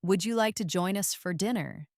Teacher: First, the question with a rising tone.